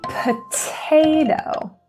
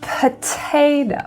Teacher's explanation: that middle syllable is the stressed syllable. So that's why that T is aspirated